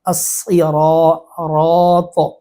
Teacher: چونکہ را پر ہے تو ساتھ الف کی آواز بھی پر ہو رہی